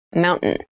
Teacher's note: when you pronounce this word in fast speech it sounds like mountain the t sound is reduced